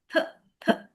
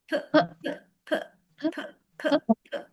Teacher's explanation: P, p, p. You're pressing your lips and you burst the air out. P, p. Feel the air.